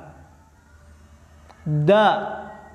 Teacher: Tidak ada nafas keluar, tidak ada nafas berhembus. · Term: jahar